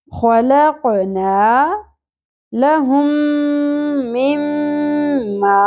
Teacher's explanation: میم ساکن کے بعد میم ادغام شفوی ہے، یہاں پر ادغام مع الغنہ کرنا ہے